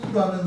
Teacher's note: 우라는 소리를 발음하면 입술을 동그랗게 하죠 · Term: 원순